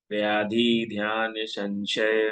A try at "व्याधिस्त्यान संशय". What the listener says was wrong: ध्यान नहीं, व्याधि स्त्यान, सत्य स्त्यान, स्त्यान, स्त्यान, व्याधि स्त्यान संशय,